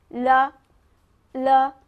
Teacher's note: যখন লা বলবেন তখন জিভের দুই পাশ দিয়ে বাতাস যেন প্রবাহিত হয় সেটা আমাদের খেয়াল রাখতে হবে।